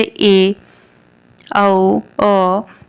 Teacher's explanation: उसके बाद कुछ स्वर होते हैं जिसमें हमें कि उच्चारण करते समय या बोलते समय मुंह का सिर्फ आधा भाग ही खुला रहता है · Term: अर्धविवृत